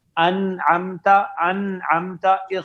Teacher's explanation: اب دیکھیں نون ساکن کی آواز کیسے آتی ہے, انعمتا انعمتا, بالکل اظہار نون ساکن کا, نو ادغام نو اخفا